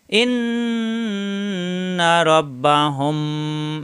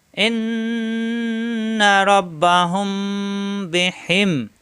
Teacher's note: মিম সাকিনের পরে মিম এবং মিম সাকিনের পরে বা আসলে গুণ হয়